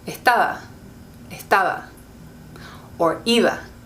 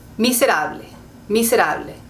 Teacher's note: When your B is in the middle of a word, it can be a lot softer. So for example, I would say estaba, estaba, or iba.